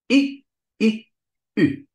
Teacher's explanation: So the U is not U plus something. The U is I plus lips. But if you move your tongue, then it doesn't work. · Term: u-umlaut